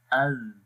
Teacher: ज़ाल हर्फ के अंदर जो पहली सिफ्त है वो सिफ्त जहर है और सिफ्त जहर के अंदर हम सांस बंद कर देते हैं। तो जब ज़ाल पढ़ेंगे तो सांस बंद हो जाएगा, सांस जारी नहीं रहेगा। तो अब इसकी मिसाल पढ़ेंगे, हमज़ा ज़ाल ज़बर अज़।